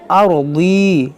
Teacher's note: یہ ضاد موٹا کریں گے اور را موٹا کریں گے